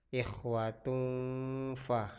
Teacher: ada tanwin dammatain bertemu dengan huruf fa. Fa itu termasuk hurufnya ikhfa. Ikhwatun fa. Jadi di sini berdengun.